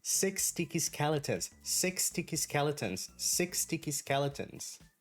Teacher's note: Now, when I'm saying this pretty quickly, the sound of S that we have in the word 6 is going to basically mix with this from sticky.